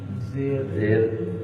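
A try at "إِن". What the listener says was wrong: ان. آپ حمزہ زیر علیحدہ پڑھ دیں گے تو پھر نون بیچارہ کیا کرے گا؟ وہ تو سیٹ خالی کیا سمجھ.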